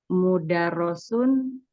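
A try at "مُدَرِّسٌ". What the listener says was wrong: Mudarrisun. Jadi mudarrisun ini kalau ada tasydid di bawahnya kasroh ini bacanya kasroh. Ya, mudarrisun. di kalau fathah dia baru mudarrosun ini kasroh. Nah, kalau dibuat tasydid dia kasroh.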